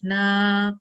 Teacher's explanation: Because there is no sukoon on top of this alif, we're going to prolong the sound for 2 seconds.